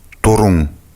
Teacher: нужно произнести звук n и отвести язык назад.